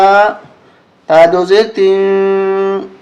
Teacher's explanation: ناک میں آواز چھپائیں گے، تین اخفا کریں گے۔ ان، یہاں غنہ ہوگا، یہاں غنہ ہوگا، یہاں اخفا ہوگا۔